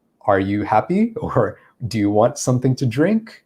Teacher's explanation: when you ask a question we would use this rising intonation at the end · It's that rising intonation at the end where the pitch of our voice goes higher.